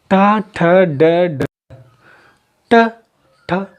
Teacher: जीभ मेरी है उल्टी हो रही है, जीभ उल्टी होकर ऊपर वाले तालु पर लगे, तो ये मूर्धन हो गया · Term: मूर्धन व्यंजन